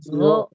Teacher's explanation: pangkal lidahnya naik terangkat ke atas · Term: Istiala